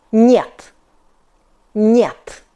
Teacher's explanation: In Russian, N is harder than in English. You must move your tongue forward to front teeth. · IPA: [nyet]